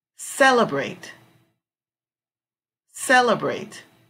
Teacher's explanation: strong syllable will come over cell